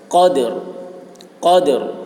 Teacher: قاف کی آواز موٹی ہوگی، دال میں قلقلہ